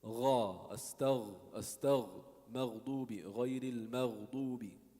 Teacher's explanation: you need more sound of the vocal cords